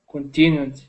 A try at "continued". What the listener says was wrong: The only thing there is that's that I sound with the I instead of E. So it's not continued, it's continued. Continued. Continued. Yeah, so just practice doing that I sound.